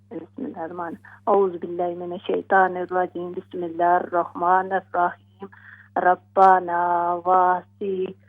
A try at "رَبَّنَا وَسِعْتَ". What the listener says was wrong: ہاں جی اس کو نہ ہم نے وسیعتا پڑھنا ہے اور نہ ہم نے وسیعتا پڑھنا ہے. ہم اس کو پڑھیں گے وسعتا.